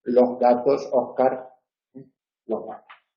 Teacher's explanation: En posición final de sílaba o palabra, en algunos dialectos, así como en casi toda Hispanoamérica, se pronuncia como una aspiración H